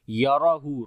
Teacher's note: होगी। याराहू, रा को मोटा पढ़ेंगे, इसके ऊपर ज़बर है, और हा के ऊपर उल्टा पेश है, लंबा करेंगे, और यहाँ पर उसके बाद हमज़ा भी आ गया तो मद्द मुनफसिल भी है , तो इस वजह